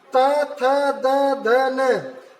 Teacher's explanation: जब आप त वर्ग व्यंजन बोल रहे हैं तो आपकी जीभ दंत से यानी आपके दांत से टकरा रही है।